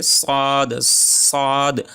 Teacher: জিহ্বার আগা সামনের নিচের দাঁতের গোড়ার সাথে লাগায়া উচ্চারণ হবে সদ